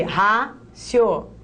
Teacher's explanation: Penúltima, então essa é uma paroxítona que terminou em ditongo crescente.